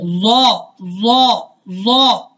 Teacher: ٹھیک ہے، زبان کی جو نوک ہے، ٹھیک ہے، جیسے یہ آپ کو تصویر میں بھی نظر آ رہی ہے، یہ زبان کی نوک ثنایا علیہ کے کناروں کے ساتھ، یہ میں نے گول دائرہ بنایا، یہ لگ رہی ہے۔ یاد رہے حرف ضا جو ہے اس میں جو زبان ہے وہ اوپر تالو کے ساتھ بھی لگتی ہے